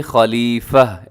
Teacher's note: لیکن وقف کریں گے تو تا کو ہا سے بدل کے خلیفہ ایسے ہو جائے گا